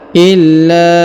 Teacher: huruf la ditahan dan ditekan lalu dipanjangkan lima harakat karena di atasnya terdapat tanda garis panjang lima harakat ya illa